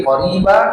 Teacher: ini mad iwad, dua harakat, ganti tanwinnya menjadi fathah biasa